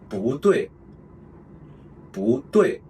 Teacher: if the character after the character Bu is a fourth tone, then we pronounce Bu as the second tone